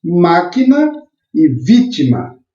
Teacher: as palavras proparoxítonas elas possuem a antepenúltima sílaba forte